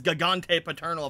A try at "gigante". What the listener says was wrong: Like how you pronounce them both as hard G's. Yeah, I would normally say Gigante.